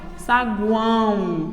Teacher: nasal quando eu falo eu pronuncio desta forma olha saguão e o meu ó tem som de u por isso ele também é um tritongo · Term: tritongo nasal